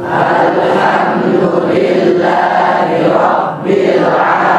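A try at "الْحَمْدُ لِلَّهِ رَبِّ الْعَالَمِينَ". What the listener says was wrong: السكون حم أيضا الحمد أنعمت خطأ قلقلة. متى قلقلة؟ قطب جدين بس، هذا الميم ليس من قطب جدين.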